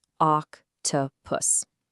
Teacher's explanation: Feel how your mouth makes that initial ah sound? That's the pure short O.